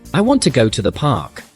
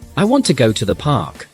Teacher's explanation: The stress is on want and park.